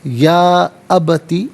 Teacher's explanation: یا میں مد منفصل ہے، مد جائز بھی کہتے ہیں، منیمم 3 سے 4 حرکات کی مقدار کھینچ کر پڑھا جائے گا، زیادہ سے زیادہ 5 سے 6 حرکات کی مقدار کھینچ کر پڑھ سکتے ہیں۔